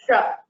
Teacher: The tongue touches the hard palate, the roof of the mouth, and that is murdhanya.